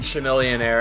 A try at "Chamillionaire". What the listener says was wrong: It's Chamillionaire. It's Chamillionaire. The H is silent.